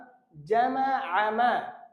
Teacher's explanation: জামা আমা না, জামা আমা। আইনটা গলার ভিতর থেকে অর্থাৎ কণ্ঠনালী থেকে উচ্চারণ হয়। তো এখানে হবে হলো জামা না, জামা।